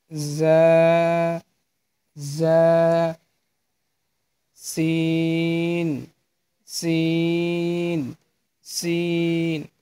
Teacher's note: সামনের দুই দাঁতের নিচের যে দুই দাঁত, এই দুই দাঁতের গোড়ার সঙ্গে লাগিয়ে যা, সিন এবং সদ উচ্চারণ করবে